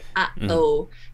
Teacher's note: a glottal, which is a little pause, right? Like if you say, uh-oh.